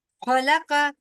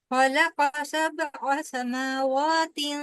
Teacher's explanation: जबर पेश को तेजी से अदा करना है, आपने बिल्कुल भी उसको लंबा नहीं होने देना